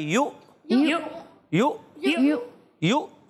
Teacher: عین کی آواز نہیں حمزہ کی